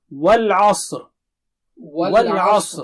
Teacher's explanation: والعصر, وا should be clear, وا جو ہے منہ گول کر کے کھولیے اور عین صاف پڑھیے, اور صاد بہت موٹا اور اونچا ہے, اور را جب آپ رکیں گے تو موٹا رہے گا.